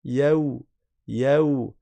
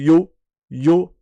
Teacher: on va passer du ya au wa avec souplesse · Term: harf lin